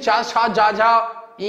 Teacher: जब हम करेंगे तालव्य में तो जीभ का जो अगला भाग होगा यह तालु को छूता है · जब हम बोलेंगे चा छा जा झा इया तो इसमें आपकी जीभ जो है तालु को टच करती है